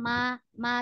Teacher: kalau dia berdiri sendiri maka ma ma bunyinya di bibir